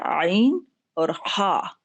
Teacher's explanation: आइन और हा ये वस्ते हलक से निकलते हैं